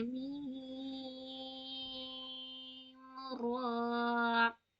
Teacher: تو میم ایک دم غنہ ناک سے کریں گے